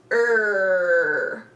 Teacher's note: our tongue curves up and we make a er sound almost like a pirate sound